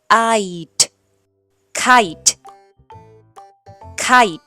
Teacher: kiteจะไม่ได้อ่านว่าKidแต่จะออกเสียงเป็นสระไอ